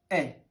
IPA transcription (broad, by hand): e